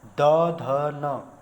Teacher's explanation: स्वर तंत्रियों में कंपन उत्पन्न होगी और एक घोष जैसा उत्पन्न होगा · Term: सघोष